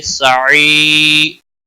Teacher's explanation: या मद्दा है, एक अलिफ के बराबर खींच कर पढ़ेंगे